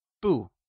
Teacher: 不 means no and uses the falling tone